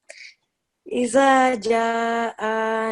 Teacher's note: Over here, on top of Jim, on top of alif, there is an extra long stretch. So we prolong the sound for 4 to 5 seconds.